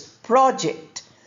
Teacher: The noun form is pronounced as project, stress on the first syllable, project. And the verb form which we are using here is project.